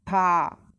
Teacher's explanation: ujung lidah bertemu gusi atas, dibuka kalau fathah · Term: huruf ta